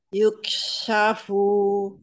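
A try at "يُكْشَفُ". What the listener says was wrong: Iya, pakai shin. Lalu, kof sukun. Jadi kof sukunnya ini, setiap mengucapkan kof sukun, itu seperti kof yang berharokat fathah. Ya, yuko. Nah, padahal, yuko. Yuko. Harusnya cepat.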